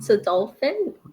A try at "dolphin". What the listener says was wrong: Well, some people do say dolphin, but I think it's actually a short O. Dolphin.